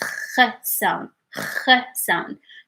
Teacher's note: So if you, did you write it like in your notebook, because so that you can like write your notes about it when we get to it. So this sound is not a stop, because we don't say like k, is like we take our time.